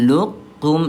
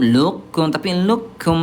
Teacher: Kemudian huruf qof dia sifat tebalnya hanya istila doang tanpa itbaq. Jadi huruf qof dia tetap kalah langsung dilebur ke kaf ya